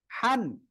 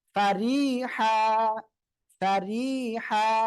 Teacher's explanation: এক জবর বাদ দিয়ে এক আলিফ টেনে পড়তে হবে